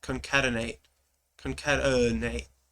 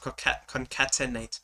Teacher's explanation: all of the vowels that are in the middle that are unstressed just become uh